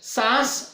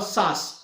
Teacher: उदाहरणार्थ सांस शब्द है, सांस जिस पर चंद्र बिंदी लगाई हुई है, यह सांस शब्द जो है इसको अगर हम उच्चारित करते हैं, सांस और सास ये दो शब्द अलग अलग है। चंद्र बिंदी वाला जब हम उच्चारण करते हैं तो वो नाक और मुख के माध्यम से वहां पे उच्चारित हो रहा है, और सास शब्द सीधे मुख विवर से वहां पे उच्चारित हो रहा है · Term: अनुनासिक